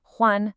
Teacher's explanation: It's a first tone. That means it's high and flat. Huan, no dipping, no falling.